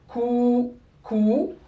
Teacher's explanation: le waouh il est venu pour prolonger le son de la damma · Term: voyelle longue